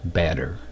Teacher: And then the double T pronounced as a flap. They call it a flap as in batter instead of batter butter. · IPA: /t/